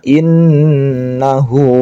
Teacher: Ada tasydid dibaca gunnah